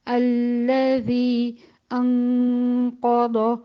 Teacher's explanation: نون میں غنہ بھی ہے اور توسط کی بھی صفت ہے، تو اس غنے کو اتنا ہی چلائیں گے جتنا ایک درمیانی آواز نکلتی ہے